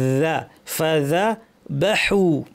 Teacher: ফাতে প্রচুর আওয়াজ এবং বাতাস, ফ্যাস ফ্যাসে।